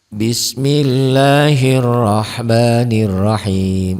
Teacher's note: lafad Allahnya dibaca tipis tarkik Kenapa karena sebelum lafad Allah baris di bawah tarkik ya Nah